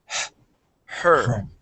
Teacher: the H in her is much quieter